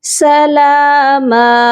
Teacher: اور لا، یہاں پر آواز کو ناک میں چھپا کر پڑھا جائے گا سلاما، سلاما، میم کی تنوین پر بھی آواز کو ناک میں چھپائیں گے